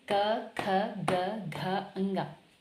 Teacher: ये जो हमारे 5 वर्ण हैं, व्यंजन हैं, तो इनका उच्चारण कंठ से होता है।